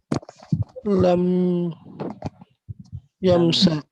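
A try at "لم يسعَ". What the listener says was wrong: Ini ain, bukan mim. Ini ain. Lam yas'a. Dihapus huruf illah yang jadi lam yas'a.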